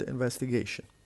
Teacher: The word investigation has 5 different syllables, and the stress is on the fourth, the one before the last, because it ends with ION.